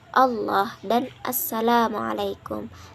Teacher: Kemudian klasifikasi bunyi yang terakhir adalah geminat dan homorgan. Nah, bunyi geminat yaitu rentetan artikulasi yang sama atau identik. Nah, sehingga menimbulkan ucapan panjang dalam bunyi tersebut